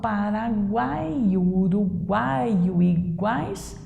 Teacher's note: Já o Paraguai e o Uruguai e o iguais são orais. Então, nasal tem que ter o tio ou um M e um N depois.